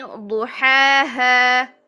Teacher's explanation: ضو موٹا، ہا اس کو تو ہم نے موٹا نہیں کیا